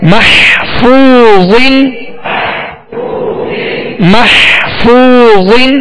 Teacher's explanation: حا کی آواز پیدا ہوگی، حا وسط حلق سے ادا ہوگا، اس کا خیال رکھا جائے کہ حا ہا نہ بن جائے، مہ یعنی یوں نہ پڑھا جائے محفوظ بلکہ محفوظ محفوظ.